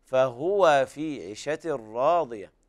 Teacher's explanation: ننبه أحباب الكرام على ضم الهاء ضمة كاملة، وكل مضموم فلن يتم إلا بضم الشفتين ضمة